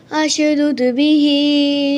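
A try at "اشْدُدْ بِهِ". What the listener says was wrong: अश नहीं बेटे, उशदुद। आगे पेश आ रही तो इधर भी पेश। उशदुद बिही अजरी। याद रखें, हर जगह ऐसे नहीं होगा कि आगे अगर पेश आ रही तो इधर भी पेश, आगे अगर जबर आ रहा तो इधर भी जबर, आगे अगर जेर आ रही तो इधर भी जेर। ऐसे नहीं, हर जगह नहीं।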